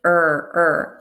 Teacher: my lips are rounded similar to when we make a w sound like round our lips a lot but less exaggerated so we've